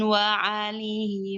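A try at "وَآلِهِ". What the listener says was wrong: Bukan wa alihi, itu pakai hamzah, bukan pakai ain.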